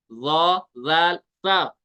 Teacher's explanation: जुबान का सिरा नोक से थोड़ा सा पीछे वाला हिस्सा यह लगता है ऊपर वाले दांतो के अंदरूनी किनारे के साथ इस एज के साथ तो अदा होता है ल सा इस